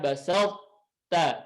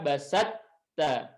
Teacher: Basal kan huruf to-nya lebur, tapi ada satu sifat yang tidak hilang yaitu sifat tafkhim. Ya, sehingga dibaca basal ta, tidak dibaca basat ta, tapi basal ta.